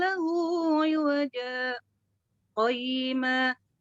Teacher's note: Qayyima. Kan di iwaja berhenti tetapi tidak bernafas. Qayyima baru bernafas.